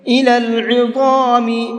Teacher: عین کو حلق سے نکالیں گے اور ضا کو مبھر کے پڑھیں گے